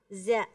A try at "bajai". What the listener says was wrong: Jangan ada desisnya, bukan za tapi ja.